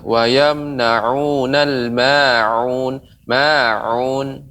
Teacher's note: pengucapan ain harus lebih lagi mengayun. Jadi ain itu ya jangan sampai seperti alif ya